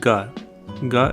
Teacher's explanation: ga as in gum. This is a velar plosive sound as well.